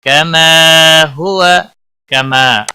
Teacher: کما الف مدہ ہے، ایک الف کے برابر کھینچ کر پڑھیں گے